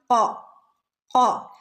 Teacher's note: ഓ ഓ എന്ന് പറഞ്ഞാൽ ഓഫിൻ്റെ ശബ്ദം വരുന്നത് നാവിൻ്റെ അങ്ങേ അറ്റത്ത് നിന്ന്, നാവിൻ്റെ മുരട് ഭാഗത്ത് നിന്ന് വരുന്ന ലെറ്ററാണ്